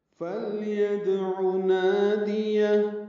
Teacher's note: لام ساکن ہے اس پہ اظہار ہے، یا کو دال سے ملانا ہے، دال ساکن ہے اس پہ قلقلہ ہے، عین وسط حلق سے ادا کریں گے، جلدی پڑھیں گے۔